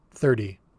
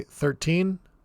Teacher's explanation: for the tens this t sound in the middle will get changed into a d sound